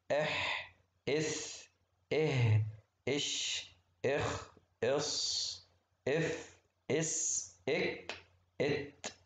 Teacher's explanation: حروفه حثه شخص فسكت، خصوصا توضح أكتر في الحروف الساكنة، لو حطيت همزة قبل كل حرف منهم هتسمع صوت الهمس فيها